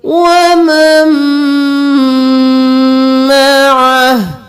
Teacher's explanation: یہاں پر ہم نون کو چھوڑ کر میم کو میم کے ساتھ ملائیں گے اور میم پر گنہ بھی کریں گے